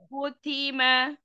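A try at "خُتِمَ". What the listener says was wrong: Ya, kho-nya ditebalkan lagi. Khutima. Ya, jaga tebal tipisnya huruf.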